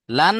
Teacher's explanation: লান, ফালান, টান দিতে হবে না ভাই, টান দিচ্ছেন লান বলে টান দিচ্ছেন কেন? লান, আওয়াজকে চেপে ধরে রাখতে হবে নাকের মধ্যে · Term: গণ্য